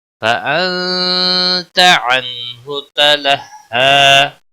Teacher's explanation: فَأَنْتَ نون ساکن کے بعد حروف اخفا کا تا ہے, اخفا حقیقی ہوگا, غنہ کے ساتھ پڑھیں گے. عنہ نون ساکن کے بعد حروف حلقی کا ہا آیا ہے, اظہار ہوگا